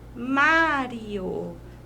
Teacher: Tá vendo que o má falamos com mais tonicidade?